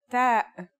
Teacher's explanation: The pronunciation is like the English T, except you should release your breath with a strong burst of air.